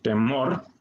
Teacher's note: lo que suena más fuerte es la segunda parte, la segunda sílaba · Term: sílaba tónica